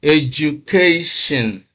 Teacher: stress is on the second syllable from the end or the third syllable from the beginning 1 2 3 so that is where we have stress education